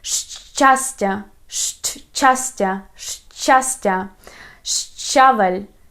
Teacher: These letters we pronounce as combination of such English letters like SH plus CH. And when you say fresh cheese, very fast, you can hear that letter sh.